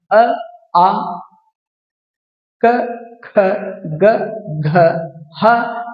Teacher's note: ಅಕ್ಷರಗಳನ್ನ ಕಂಟಾಕ್ಷರ ಅಕ್ಷರಗಳು ಅಂತ ಕರೀತೀವಿ ಅಂದ್ರೆ ಕಂಠದಿಂದ ಉತ್ಪತ್ತಿಯಾಗುವಂತ ಅಕ್ಷರಗಳನ್ನ ಕಂಟ್ಯಾಕ್ಷರಗಳು ಅಂತ ಕರೀತೀವಿ